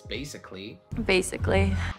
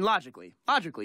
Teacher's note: The A is silent basically in A-L-L-Y endings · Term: silent letters